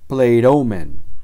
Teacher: en cada caso el acento de la palabra recae sobre la contracción